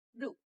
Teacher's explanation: produced with more tension and a longer sound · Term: Tense vowel